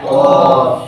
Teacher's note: جو کوے کے پاس میں ہماری زبان کی جڑ ہے اور تالو کا جو نرم حصہ ہے، وہاں پر جب ہم زبان کو لگاتے ہیں تو قاف ادا ہوتا ہے